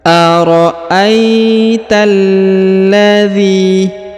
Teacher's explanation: huruf zzi dipanjangkan dua harakat karena di depannya terdapat ya sukun atau ya mati · sekali karena di depannya terdapat Ya Sukun Aita Aro Aita kemudian huruf ta langsung disambung masuk ke huruf lam yang berharakat tasdid Ya ditahan dan ditekan